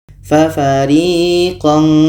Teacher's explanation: ini ada bunyi Nun maka ketika Kaf ini bertemu dengan tanwin makhraj Ka tadi kita lihat jauh dari huruf nun maka di sini menghasilkan bunyi nga